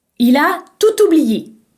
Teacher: si le mot tout est situé devant un mot commençant par une voyelle vous pouvez le prononcer toute